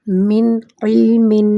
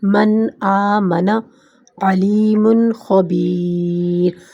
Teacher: نون پوری طرح ادا ہوگا، ناک کی آواز گننا نہیں ہوگی، آواز صاف اور الگ ہوگی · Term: اظہار